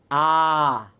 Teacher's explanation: মাঝখানেও মানে সামনেও আসে না পিছনেও যায় না, মাঝামাঝি। এই জন্য আকে কিন্তু কেন্দ্রীয় ধ্বনি বলা হচ্ছে। আকে কি বলা হচ্ছে, কেন্দ্রীয়।